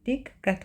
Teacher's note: Diqqət sözündə birinci q k tələffüz olunur.